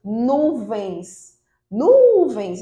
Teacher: observe que o nu é a sílaba mais forte, então ela é uma paroxítona, mas é terminada em ens.